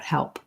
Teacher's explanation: if i'm just saying help i'm going to let that pee out